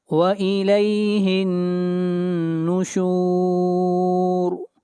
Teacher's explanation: ہا کو ملائیں گے نون کے ساتھ اور نون کے اوپر شد ہے، غنہ ہوگا، اور یہاں پر را کو موٹا پڑا جائے گا۔